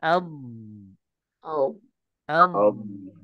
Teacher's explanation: itu itu nama istitalah yang membawa suara rakhwa Nah ya jadi suara rukhwanya itu mengalir memanjang